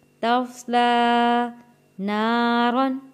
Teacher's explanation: تا کو موٹا نہیں پڑھیں گے، صاد کو موٹا پڑھیں گے اور لام کو بھی یہاں پہ موٹا نہیں پڑھیں گے